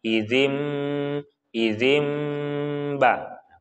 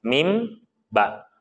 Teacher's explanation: Karena mim dan ba itu berada pada makhraj yang sama, yaitu di syafatain atau di dua bibir. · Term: iklab